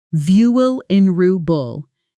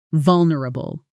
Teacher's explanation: Notice that middle part isn't nr, It compresses into a quick nr, almost swallowing the vowel completely.